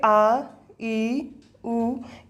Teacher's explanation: जिनके उच्चारण में मुख से थोड़ा ज़्यादा समय लगता है लघु स्वर से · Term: दीर्घ स्वर